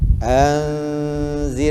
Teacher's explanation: nun mati bertemu dengan zal, ikhfa hakiki, dengung